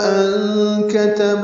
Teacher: ان کتب میں نون ساکن کے بعد کاف آنے کی وجہ سے اخفا ہے